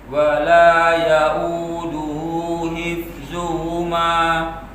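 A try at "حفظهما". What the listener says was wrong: Ya, hif ya, masih ha juga lagi. Jadi untuk penerapan matnya dah pas, itu mat yang 2 rakaat atau yang mat yang 5 rakaatnya dah pas, itu pengucapan ikhfanya dah bagus. Ya, cuma di ha tadi sedikit ya. Untuk pengucapan ha, hi, hu. Nah, itu yang coba kita haluskan dikit lagi.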